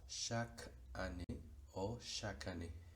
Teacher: Esta E caduca en este caso sería muy probablemente totalmente silenciada, entonces podemos hacer el encadenamiento entre la Q con la A.